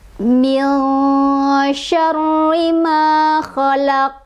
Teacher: Maka ketika huruf qaf jadi sukun, dia jadi qolqolah. Qolqolahnya qolqolah kubro ya, qolqolah besar. Jadi cara bacanya adalah dipantulkannya besar.